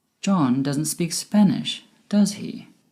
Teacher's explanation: my voice went down at the end with does he because i'm sure he doesn't speak spanish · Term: falling intonation